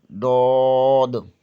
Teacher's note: زبان کی بائیں کروٹ بائیں دانتوں کے مسوڑوں سے لگے تو ڈود ادا ہوتا ہے، اس لیے اسے حروف حافیہ کہتے ہیں۔